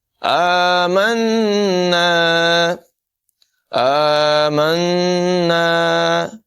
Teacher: نون مشدد میں غنہ ہوگا